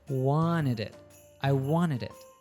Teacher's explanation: Then the D from wanted links to it, forming one chunk. Wanted it. I wanted it.